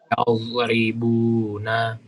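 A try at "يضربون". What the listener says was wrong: Sama, usahakan pinggirannya nyentuh.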